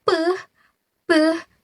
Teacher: bilabial sound, yaitu bunyi yang dihasilkan menggunakan kedua bibir